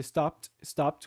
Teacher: Então, voltando aqui à nossa tabelinha para vocês verem, se termina com P, stop, deveria ser então um som de T curto. Então, não pronuncia o ED nesse caso. Seria stopped, stopped, com um som de T no final.